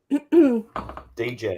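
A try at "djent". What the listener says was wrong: Just gent. D is silent. The D silent.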